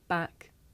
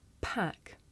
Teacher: with the voiceless sound there's a big puff of air you can feel it with your hands